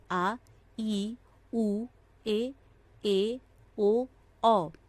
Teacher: दीर्घ स्वर, जिन वर्णों के उच्चारण में ह्रस्व स्वर से दुगुना समय लगता है, वे दीर्घ स्वर कहलाते हैं। यह संख्या में 7 होते हैं।